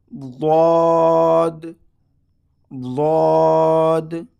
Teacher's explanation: کنارہ زبان اوپر کی داڑھ سے رگڑ کر کے نکالنا ہے. ضاد اس حرف کو ضاد پڑھنا ہے.